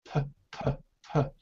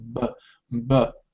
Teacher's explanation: produce P and B in the same way, except that for B, your vocal cords vibrate.